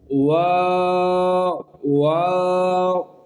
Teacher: یہاں پر او کی آواز نہیں دینی، بس واو واو، جہاں پر ہونٹ گول ہو جائیں بس وہاں پر چھوڑ دینا، آگے آواز نہیں پیدا کرنی۔